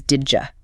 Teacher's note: It almost always becomes didja. That D and J sound blend together.